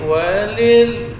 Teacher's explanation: Kemudian lam, huruf tawassul. Walil, ya, ketika sukun huruf lam maka tetap mengalir sebagian dari suara. Dia harus sempurna ini sukunnya.